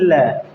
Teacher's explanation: ऐसे बोलेंगे ल, ल जब बोलोगे तो जीभ जो है मसूड़े पे लगेगी जाके ऊपर के दांतों के। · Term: वत्सर्य